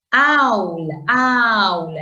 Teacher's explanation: el acento está en la A, eso es diptongo